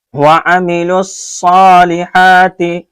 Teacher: اس لام کو صاد سے ڈائریکٹ جوڑنا ہے